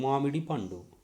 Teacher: we say in Telugu with equal weightage or stress